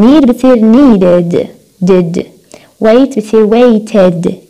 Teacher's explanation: ال D أو ال ED pronounced id